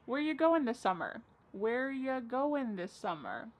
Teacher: Where ya, which is you, goin', dropping the G.